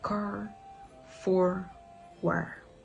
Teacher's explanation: Canadians produce R sound in all the words when it is written, including the R sound when it's at the end of the word.